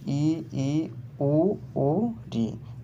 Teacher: समृत स्वर के उच्चारण में मुख द्वार सकरा हो जाता है